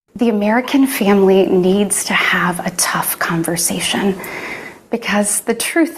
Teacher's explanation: the breathy quality, the slight tremble in the voice